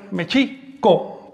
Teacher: el acento recae sobre la I, Mexico, porque todas las palabras del náhuatl son graves o llanas, es decir, se acentúan, todas las palabras de dos sílabas o más, se acentúan en la penúltima sílaba.